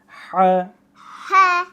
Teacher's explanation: গলার মাঝখান থেকে গলা কিরকম চাপ দিয়ে বলবো।